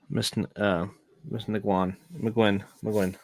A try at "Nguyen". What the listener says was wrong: This is Nguyen. Nguyen. Don't say the G.